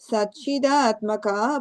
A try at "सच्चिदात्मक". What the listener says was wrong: The makka, the the makka. you're saying that ah sound, that's why it's not landing. That makka.